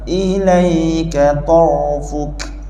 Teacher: masa kita sebut tor, ra kat sini tebal. Masa tor lidah ke belakang. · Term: ra tebal